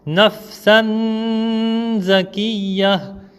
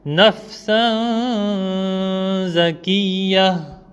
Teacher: En faisant le ikhfa, ma langue ne touche pas le palais. En touchant le palais, j'aurais fait par exemple nafsan zakiyya.